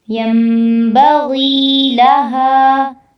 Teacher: ینبغی لہا، غی میں یا ساکن سے پہلے زیر ہے، یہاں پر مد اصلی ہوگی تو اس کو لمبا کرنا ہے۔